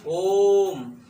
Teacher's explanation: ये प्लुत स्वर में इसमें 3 गुना समय लगता है ह्रस्व स्वर के